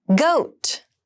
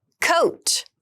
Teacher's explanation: goat has the voiced G sound and coat has the unvoiced C Sound